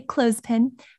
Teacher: the th in clothes pin i don't do that i like to take a little shortcut just skip the th · I like to take a little shortcut. Just skip the TH. I say clothespin, but if you want to go ahead and pronounce that TH, more power to you.